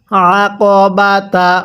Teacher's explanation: আইনটা পড়ার সময় গলার মধ্যে একটু চাপ দিয়ে পড়লে আইনটা এটা সহি শুদ্ধ উচ্চারণ হবে